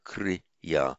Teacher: Now, the kr plus ya by internal santi, the r becomes full consonantal r